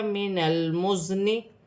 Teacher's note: زا بھی ساکن ہے، زا سیٹی والے حرف میں سے ہے، جماؤ کے ساتھ ادا کیا جائے گا